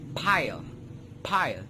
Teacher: You can observe that both my lips were together when I produced that sound.